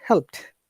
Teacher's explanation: Though there is D, but when you pronounce it in natural way, the D becomes T in this case.